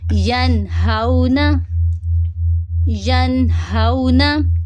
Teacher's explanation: حروف حلقی میں سے ہا آ رہا ہے، تو ہم نون کی آواز کو یہاں پہ بھی ظاہر کریں گے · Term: اظہار